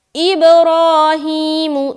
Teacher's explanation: را اور ہا کو کھینچیں گے کیونکہ یہاں پر کھڑا زبر ہے جو کہ الف مدہ کے برابر ہے، اور ہا کے نیچے کھڑی زیر ہے جو کہ یا مدہ کے برابر ہے۔ · را کو موٹا رکھیں گے کیونکہ را کے اوپر کھڑا زبر ہے